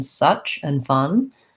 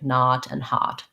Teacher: so many people when they're doing the schwa sound like in such and fun will instead do more of an ah like not and hot